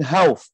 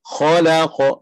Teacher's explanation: Kha tebal, isti'la, la istifal, qaf isti'la pula.